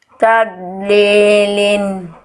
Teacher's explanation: D enggak boleh mantul ya. · Ingat, Dod bukan dal. Dod enggak punya sifat qol qalqalah gitu ya.